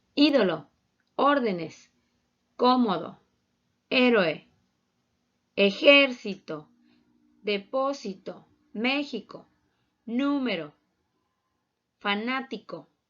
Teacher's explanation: Su sílaba tónica es en la antepenúltima sílaba. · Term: esdrújulas